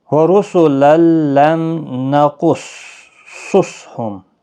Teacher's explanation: وَرُسُلًا لَمْ نَقُصُّصْهُمْ، رُسُلًا را پیش کی وجہ سے پور پڑھا جائے گا، تنوین کے بعد یرمل الکلام ادغام ہوگا لیکن گنہ نہیں کریں گے۔ لم میم ساکن کے بعد نون اظہار شفوی ہوگا، قاف مستعلیہ ہے، پور پڑھا جائے گا، صاد بھی پور پڑھا جائے گا، یہ والا صاد بھی پور پڑھا جائے گا، اور قاف ساکن پر قلقلہ بھی ہوگا۔